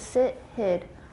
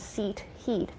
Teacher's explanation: it's a totally different quality in addition to being shorter